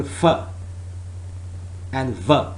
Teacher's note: f and v, both are labiodental sounds